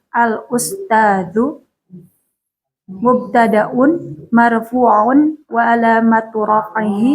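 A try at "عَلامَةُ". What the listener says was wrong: Panjang. Alamat.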